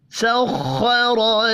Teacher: سبحان الذی سخر لنا، سخر، خا اور را پر پڑھے جائیں گے۔ خا حروف مستعلیہ ہے اس لیے پر پڑھیں گے، جبکہ را کو زبر کی وجہ سے پر پڑھنا ہے